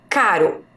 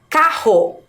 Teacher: o r está entre duas vogais mas a pronúncia é fraca